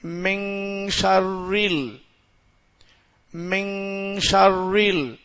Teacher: மின்னு நூன் சத்தம் கொடுக்க நாம ங் வச்சு ஓதணும் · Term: இஹபா